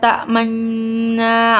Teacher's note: suara dengung murni sebagai isyarat adanya domah dari nun yang disembunyikan, atau memoncongkan bibir dengan disertai dengung selama 2 harokat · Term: bacaan ismam